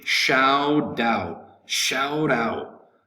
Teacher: the accent is going to be over the second word out and we would pronounce this in a quick way in american